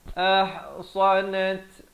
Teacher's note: Ahsanat ada bunyi hamasnya, bunyi angin. Ahsanat far jadi tebal.